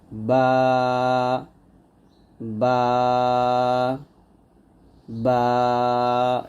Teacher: দুই ঠোঁট মিল করে অর্থাৎ দুই ঠোঁটের ভিজা অংশে মিল করে বা টা পাতলা করে উচ্চারণ করব